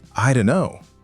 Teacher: the don't becomes softer. The T almost disappears.